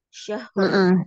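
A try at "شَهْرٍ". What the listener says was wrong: Berikan haknya, dia punya sifat hamas dan rohoa, ada aliran suara. Jadi jangan dipantul.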